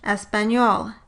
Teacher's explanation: the palatal nasal /ɲ/ in transcription of Spanish accented English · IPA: [ɛspaɲol]